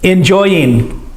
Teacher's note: you can also say singing and end it with the n sound instead of the g sound